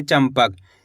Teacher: च के ऊपर अनुस्वार की मात्रा है। इसके बाद वाला अक्षर प। तो यह रहा प। तो यहां पे अपन आधा म का उच्चारण निकालेंगे।